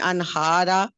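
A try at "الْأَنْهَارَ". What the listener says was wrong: الانہارا, الف لام بھی ہے, اس کو لازمی پڑھا کیجیے, الانہارا, الانہارا, الانہارا.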